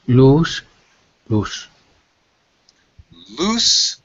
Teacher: loose with an S sound and an oo